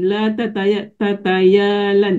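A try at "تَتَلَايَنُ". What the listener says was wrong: Tertukar hurufnya.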